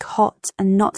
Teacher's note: Open vowels. words like hot and not have a more open a sound in American English compared to British accents.